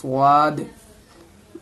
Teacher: स्वाद को बिल्कुल मोटी करके बोलनी है